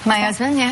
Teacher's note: The H sound alone is silent in French, so we often just drop it in English